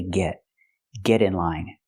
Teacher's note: we hear the pronunciation of T change to a fast D